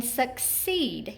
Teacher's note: you can hear that long e accented in our second syllable